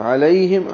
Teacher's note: عین وسط حلق سے، لئی عیلین ہے، ہا اقصى حلق سے.